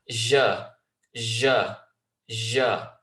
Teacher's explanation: And it is a common letter in certain parts of the world, the Arab world, for that letter to be pronounced, where you have the letter j, j, j. And there's not a complete connection between the tongue and the roof of the mouth